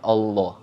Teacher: Kalau sebelum lafaz Allah itu dibaca Lemah atau fathah maka berarti hukumnya adalah tafkhim kita bacanya tebal